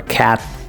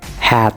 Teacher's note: The unreleased T, which is a T sound with no audible release, usually at the end of a word. Some examples, particularly in American English, are cat.